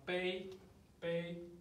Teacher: So make sure the tone is flat